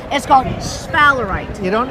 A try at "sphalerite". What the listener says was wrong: It's not SH, it's sphalerite. Think of it as SF, but the PH is the F sound.